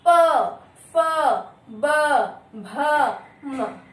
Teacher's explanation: ठीक है, फिर आता है प वर्ग, इसे कहा जाता है औष्ठ्य, यानी इन्हें बोलने के लिए आपके होठों को छू करके वायु बाहर आती है।